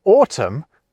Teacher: So in the case of the word autumn, we drop that ungainly N.